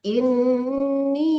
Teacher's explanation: Inni itu panjang ibu. Empat harkat.